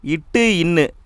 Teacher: நாவுடைய நுனிப்பகுதி அன்னத்தின் நுனிப்பகுதியை தொடுவதால் உருவாகிறது.